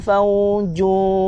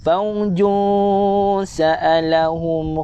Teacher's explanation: Tanwin berjumpa huruf sin, sini ada ikhfa hakiki dengung NGG